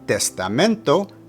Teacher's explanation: put the emphasis of pronunciation on the penultimate or second to last syllable